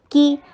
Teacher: کاف کو لائٹ رکھیے اور شارٹ رکھیے, اس کا کسرہ.